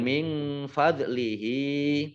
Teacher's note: Kemudian min fadlihi. Nun sukun bertemu dengan huruf fa, bacaan ikhfa dibaca samar-samar.